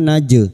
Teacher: Jim sukun yang mati asli di tengah kalimat qalqalah sugro. Jangan lupa dipantulkan.